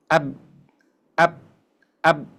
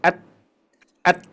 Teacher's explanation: Karena makhrajnya ditekan kuat, jadi nggak ada udara, nggak ada suara yang bisa mengalir ketika kita tutupkan awalnya tadi. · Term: Syiddah